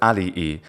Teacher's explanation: He puts a glottal stop in between the two e vowels, and that is not a trait of Latin. It would be alii.